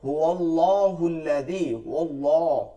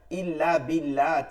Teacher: আল্লাহ শব্দে লামকে দুই ভাবে পড়া যায়। এক হচ্ছে পুর বা মোটা, দুই হচ্ছে বারিক বা চিকন।